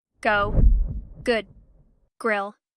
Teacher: There is a small difference between the English G sound and the Korean one. In English, the G in words like go or good uses stronger vocal cord vibration.